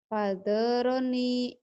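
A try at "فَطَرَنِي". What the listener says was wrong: Foto. To. To sama do ketukar dulu ya. Fatoroni. Itu cuman salah to sama zo. To, zo sering ketuker ya.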